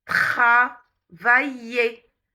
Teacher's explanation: le R français qui n'est pas un R roulé ni un R anglais. C'est un son guttural.